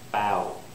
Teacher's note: you start with the a vowel you end with the w